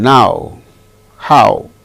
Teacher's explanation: weak the sound starts with weak ends with go no then ow sound starts with strong ah ends with o as in now how